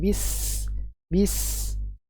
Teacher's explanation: sofir adalah suara yang tajam yang terjadi ketika suara mengalir melalui tempat keluar yang sempit